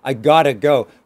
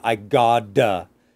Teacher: I say that the T relaxes, it becomes a D. I gotta. That D is like dog. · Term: the flap